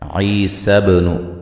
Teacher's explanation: बा पे क़लक़ला करेंगे